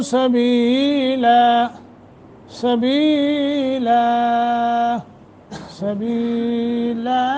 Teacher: لا، ہم یہاں وقف کر رہے ہیں تو نون تنوین کو اڑا دیں گے، الف پہ رکیں گے. طول، توسط، قصر تینوں جائز ہیں